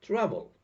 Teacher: the stress falls on the first syllable it could be travel or travel it's not travel it's travel